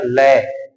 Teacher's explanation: यानी कि जो जिह्वा का जो अगला भाग है, मसूड़ों को स्पर्श करता है, अपन बोलते हैं लय। लय यानी जो जिह्वा होता है वो मसूड़ों को स्पर्श करती है, और जो वायु होती है वो जीभ के पिछले हिस्से के बगल में यानी कि आसपास होकर के निकल जाती है। तो वो होता है वास्तविक व्यंजन होता है। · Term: पार्श्विक व्यंजन